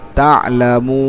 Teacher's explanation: মদের হরফ না বরং এটা মধ্যে আরজি হিসেবে তিন আলিফ টানতে হবে। যেহেতু আমরা পরের অক্ষরে থামতেছি।